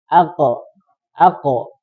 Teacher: qo huruf qo ketika dalam keadaan sukun dia tertahan ya kan ak tidak bisa keluar sebenarnya makanya dikasih sifat selanjutnya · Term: Qalqalah